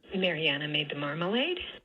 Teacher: down low and then it rises at the tail end because this is a yes/no question